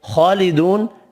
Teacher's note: خالدون کھڑی زبر واو مدہ بھی ایک ایک الف کی مقدار میں کھینچ کر پڑھیں گے۔ خا حروف مستعلیہ پر پڑھنا ہے اور نون ساکن پڑھنا ہے وف کی صورت میں۔